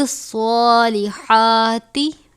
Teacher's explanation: وَالْحِجَارَةُ أُعِدَّتْ لِلْكَافِرِينَ، وَبَشِّرِ الَّذِينَ آمَنُوا وَعَمِلُوا الصَّالِحَاتِ، اب یہاں پہ صاد ہے، پر پڑھا جائے گا، ہا کو باریک پڑھیں گے